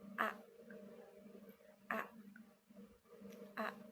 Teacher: Pertama kita akan membahas fonem A. Vonem A dibentuk dengan mulut terbuka lebar dan lidah berada di posisi rendah